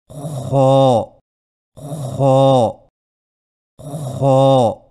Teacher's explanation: اور یاد رکھیں کہ خو کی ادائیگی میں خرخراہٹ کی آواز پیدا نہ ہو